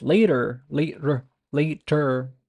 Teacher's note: the tongue kind of flaps a quick flap but it kind of deletes the sound of the T but · A tongue flap that actually exists in English, T in between vowels.